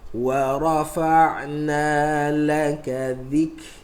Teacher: Tengok, dia ada hams, dia ada rakhawah. Rakhawah suara keluar, tapi hams nafas keluar. Kaf nafas keluar, ta nafas keluar. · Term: huruf hams